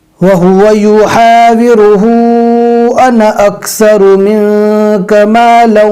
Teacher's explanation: वहाँ पर अलिफ को नहीं पढ़ा जाता, अन ही पढ़ा जाता है। अन पढ़ेंगे इसको, लेकिन याद रखना है नून के ऊपर तशदीद न हो।